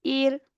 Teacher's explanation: حمزہ را زبر اور، حمزہ را زیر ایر، اب یہاں پہ ہم نے را زیر ایر یعنی اس کو موٹا نہیں پڑھا